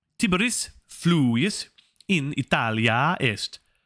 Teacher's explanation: we see that elongated A vowel again on the end of Italia